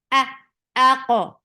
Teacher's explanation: Hamza is sharp, no flow of sound. For fatha, open your jaws, attach with qaf.